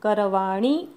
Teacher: णी ऱ्हस्व म्हणायचा, बाणाचा न म्हणायचा.